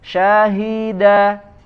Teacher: Nah, bukan, hati-hati, bukan syahida, syahi dari pangkal tenggorokan huruf H-nya